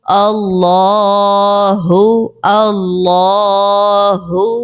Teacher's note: اللہ تبارک و تعالیٰ کے لام سے پہلے جو ہے زبر ہے، اسی لیے یہاں پر اللہ کے لام کو پر پڑھیں گے